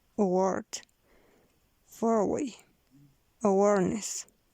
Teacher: Voiced velarized bilabial semivowel.